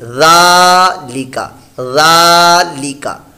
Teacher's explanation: غا کو صرف ہمیں لمبا کرنا ہے، لام اور کاف کے اوپر حرکت ہے، اس کو دراز نہیں کرنا، کھینچنا نہیں ہے